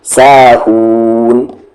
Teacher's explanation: صلاتہم ساہون، کھینچتے ہوئے نون ملائیں گے ساہون